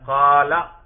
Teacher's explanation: اس الف نے کیا فائدہ دیا؟ اسی قاف کے زبر کو کھینچ کر لمبا کر دیا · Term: حرف مدہ